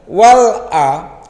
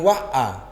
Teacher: Yang perlu harus tekanan wal a bukan wa a, tapi alif lamnya dibaca. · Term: Idhar